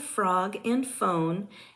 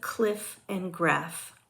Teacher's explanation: are produced by touching the bottom lip to the upper teeth f is an unvoiced labio Dental frickative